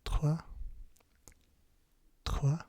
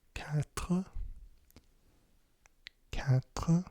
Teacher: It's kind of similar to a German R. It's a kind of guttural. It's like in the back of your throat. It's not really like a rolled R like in Spanish. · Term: R sound